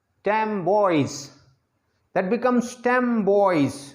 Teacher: Here you have two words, stem boys, that becomes stem boys. What is the reason that N becomes M? Because B is bilabial sound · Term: Assimilation